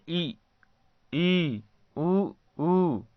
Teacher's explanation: इसका जब हम उच्चारण करते हैं तो हमारा मुख लगभग बंद रहता है, इसीलिए इसे समवृत स्वर कहा जाता है।